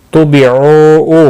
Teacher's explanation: واو مدہ ہے، ایک الف کے برابر کھینچ کر پڑھیں گے